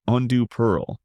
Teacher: pronounced undue pearl with a softer duh and rounder pearl. Andu pearl giving it a smoother relaxed tone. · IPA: /ˈɛndə pɜːl/